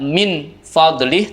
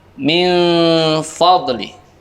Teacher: suara non sukunnya dibaca samar, diikuti dengan suara mendengung